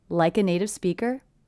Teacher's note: in the entire sentence I don't hear any gaps or pauses between words · Because again, it's a T coming between 2 vowel sounds, will be a flap T, sounds like a D